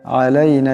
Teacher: আলাইনা এখানে আইন আছে, আওয়াজটা গলা থেকে চাপ দিয়ে আনতে হবে